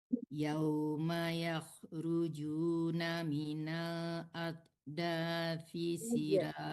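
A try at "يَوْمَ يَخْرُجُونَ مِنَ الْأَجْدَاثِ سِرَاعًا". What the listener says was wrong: dikasih kala-kala jimnya ya. Minal ajdathi sira'an. Ya, ditebalkan juga ron.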